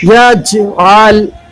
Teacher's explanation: یجعل جیم پر جزم ہے اس لیے یہاں پر قلقلہ کریں گے، یجعل، اور لام پر قلقلہ نہیں ہوگا۔